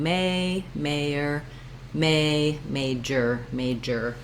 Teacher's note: so you note that i rewrote them as the letters er they're just a single tight er american sound not an or diphthong that's because they're in the unstressed syllables and they're reduced so